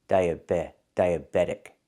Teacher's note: we hear that T changing to a fast D